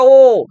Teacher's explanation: ও উচ্চারণ করো, দেখবে ঠোঁট কিন্তু তোমাদের কি হয়, কুঞ্চন হয়ে যায়, গোল হয়ে যায়, ঠিক আছে, তাই বলছে রাউন্ডেড।